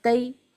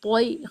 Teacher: طوا جو ہے وہ تا کے مخرج جیسا ہے، لیکن اس کو ہیوی ساؤنڈ کے ساتھ پڑھیں گے۔ تئی، اگر تئی پڑھا تو یہ غلط ہوگا، طوئی خیال رکھنا ہے۔ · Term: حرف طوا